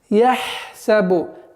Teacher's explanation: Ха – гортанный звук, и нужно на него акцент делать. Почему? Потому что после идущей буквы у нас свистящий син, и поэтому нужно обращать внимание, чтобы свойство свист оставалось полноценным.